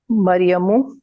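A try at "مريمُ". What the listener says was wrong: मरियमू, यस,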